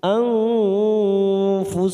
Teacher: Zalamu anfusahum nun sukun bertemu fa ikfa hakiki kita samarkan 3 ketuk, anfusahum. · anfusahum mim sukun bertemu dal idhar safawi kita baca jelas